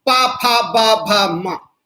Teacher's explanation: होठ मिल जा रहे, हवा आके इन पे रुक जा रही, झटके से ये खुल रहे, हवा बाहर निकल रही, उच्चारण पैदा हो जा रहा। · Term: पवर्ग